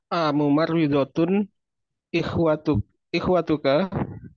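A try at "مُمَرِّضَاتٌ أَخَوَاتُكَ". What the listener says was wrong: Itu dotnya panjang karena jamak muannats salim. Mumarridotun. Hati-hati antara membaca lafaz yang mufrad muannats dengan jamak muannats salim. Ya, panjang pendeknya itu secara audio berpengaruh. Ya, secara pendengaran. Kalau antum mengatakan mumarridotun berarti mufrad itu. Ya, padahal kan mumarridotun dotnya panjang.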